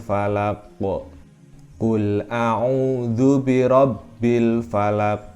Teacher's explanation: Qalqalah artinya adalah memantul bacaannya memantul terdapat pada kata al-falaq